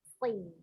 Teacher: Jadi bukan nashi, shi, tapi si ya. Ujung lidahnya berada di antara ujung gigi seri atas dan bawah. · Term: huruf shadnya